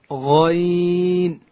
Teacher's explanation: غین ادا کیږي د ستوني په سر کې او حرف غین چې دی دا ډکول کیږي